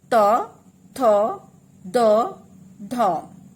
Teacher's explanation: आपकी जो ये है टंग है वो ऊपर वाले दांत को, जो ऊपर दांत का मसूड़ा है उसे टच कर रही है